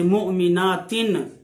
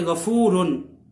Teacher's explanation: نون تنوین جو ہے وہ لکھا نہیں جاتا مگر پڑھنے میں نون کی آواز آتی ہے ، جیسے مؤمناتن، آخر میں تنوین ہے تو نون نظر نہیں